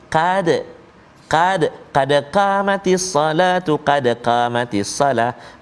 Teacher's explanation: Jadi qad qaf kena betul-betul. Qad tebal, qaf qa, pangkal lidah dia duduk belakang. Belakang pangkal lidah tu dekat dengan anak tekak kan.